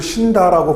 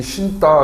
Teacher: 뒤에 오는 어미의 초성 디귿이 된소리가 된다